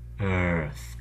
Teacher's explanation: The E, A, and the R are all subsumed together into an R, and then a th, the unvoiced interdental fricative, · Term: R-colored schwa